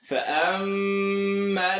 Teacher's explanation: Mim shadda, full nasal sound.